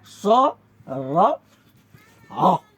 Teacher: उच्चारणका क्रममा उच्चारण अवयवहरूको नजिकै जिब्रो पुगे पनि नछोइकन श्वास मात्रै घर्षण भएर उच्चारण हुने वर्णलाई चाहिँ हामी सङ्घर्षी भन्छौँ। यो अन्तर्गत स र ह ध्वनि पर्छन्।